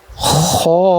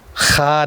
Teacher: خو یہ پہلا موٹا حرف ہے، خا نہیں، خو حلق کے اوپر والے حصے سے یہ ادا ہوتا ہے